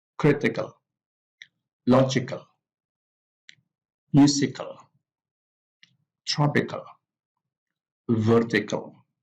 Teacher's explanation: So here the stress of the three-syllable adjectives are on the first syllable.